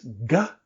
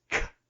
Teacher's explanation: So if I use my voice, it's g. If I don't use my voice, it's k.